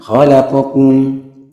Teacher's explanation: seakan-akan qaf itu hanya separuhnya saja dibacanya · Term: ikhtilas